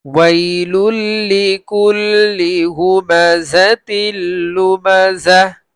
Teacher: ওয়াইলুল লিকুল্লি হুমাযাতিল লুমাযাহ, তানবীরের পরে লাম আসছে এই ইদগামে বেলা গুন্না, মানে গুন্না হবে না, গুন্না ছাড়া মিলিয়ে পড়বো। তার আরেকটা আসছে বেলা গুন্না, এই যে তানবীরের পরে লাম আসছে এটাও ইদগামে বেলা গুন্না, এখানে গুন্না নেই।